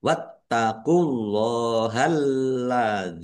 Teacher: alladzi lamnya ada tasdidnya dibaca dobel